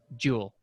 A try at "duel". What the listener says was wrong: it sounds like it sounds like you're saying like yeah it did sound like jewel